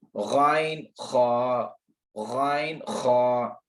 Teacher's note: मखरज number 4 अदनाए हलक, हलक का ऊपर वाला हिस्सा